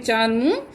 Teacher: अनुनासिक ध्वनि अनुनासिक ध्वनि, इन ध्वनि का उच्चारण मुख और नाक दोनों से किया जाता है।